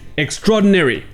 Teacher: A et le O ne sont qu'une seule voyelle